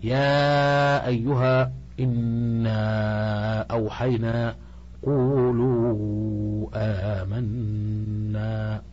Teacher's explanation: وهذا النوع يسمى مدا منفصلا لان المد في كلمه والهمزه في كلمه اخرى · يلزمنا ان نزيد المد قليلا لان الهمزه تخرج من اخر الحلق فنجعل المد اربعه حركات بمقدار ما نعد واحد اثنين ثلاثه اربعه ويجوز ان نزيدها الى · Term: المد المتصل والمنفصل